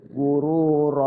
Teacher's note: Nah, gururon jadi gururo. Yang tadinya pendek gururon ya. Maka jadi panjang gururo karena kita wakaf di situ, berhenti di situ. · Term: mat iwad tanwin